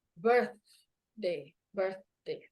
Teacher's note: jadi saat pengucapan birthday itu lidahnya akan seperti terjepit antara Gigi atas dan Gigi bawah